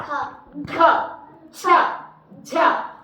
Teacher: మహాప్రాణం ఉంటే గట్టిగా చెప్తాం క ఖ ఛ అప్పుడు మనం ఊపిరి ఇట్లా బిగ బట్టి చెప్తాం